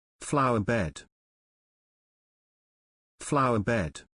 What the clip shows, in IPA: ˈflaʊə ˌbed